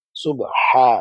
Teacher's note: এই যে হা টা বলার সময় গলা থেকে নিয়ে আসতে হবে